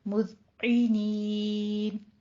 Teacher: مذعینین میں دال کو اپنے سیٹی کی آواز نہیں لانی، مز نہیں کہنا، مز دال نرمی سے عی عین زیر ای اے نین نہیں کہنا، مذعنین۔